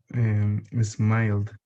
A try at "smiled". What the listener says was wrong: Yes. Perfect.